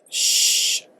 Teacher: voiceless sounds are produced with the vibration of the vocal cords the air flows like a whisper when we say Shh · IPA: /ʃ/